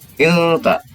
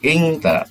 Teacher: tanwin ini kepada dipersiapkan kepada makhraj ta, maka akan berbunyi ilta, bukan ingta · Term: ikhfa hakiki